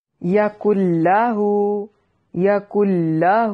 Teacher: لام کو لمبا نہیں کرنا، اخفا بھی نہیں کرنا. یہاں پر ادغام ہو رہا ہے مگر بغیر اخفا کیے